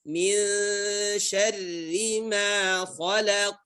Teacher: Ya, syarri, ra di sini kasrah yang dibaca dengan tarqiq. Syarri ma makhraj daripada huruf ma ya, kedua bibir ya, ma kedua bibir tertutup, ma sama dengan huruf ba, min syarri ma khalaq.